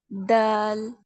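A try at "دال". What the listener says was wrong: দাল একটু টেনে করতে হবে,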